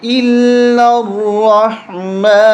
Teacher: حمزہ کو لام کے ساتھ ملائیں گے، لام کو را کے ساتھ ملائیں گے. اس الف کو اور اس الف کو اور اس لام کو نہیں پڑھیں گے، یہ تین نہیں پڑھے جائیں گے.